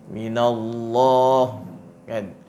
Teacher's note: Maka itu ditafkhimkan bunyi dia minallah apabila sebelumnya berbaris atas. Tapi kalau dia baris bawah, dia jadi nipis lah.